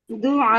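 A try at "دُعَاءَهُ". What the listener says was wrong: ना ना, अगर आपने दुआ हु पढ़ दिया तो वो वक्फ नहीं हुआ ना।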